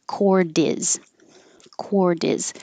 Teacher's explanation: the T will change to a D, and now it's cordiz